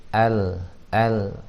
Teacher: Tipis ya. Al itu tawassut, sifatnya bainiyah. Tidak mengalir banget, tidak juga tertahan banget